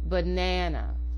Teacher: There are 3 A's in this word, but only the second A gets its full pronunciation. The other 2 A's are reduced to a short, quick schwa or sound. The second A is longer and gets a full A production, so banana. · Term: alternating stress pattern